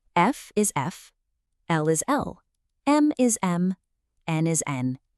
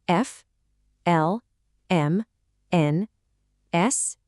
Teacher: These letters all kick off with a really short, kind of punchy E sound, like at the beginning of the word get. Listen for that sound right at the start.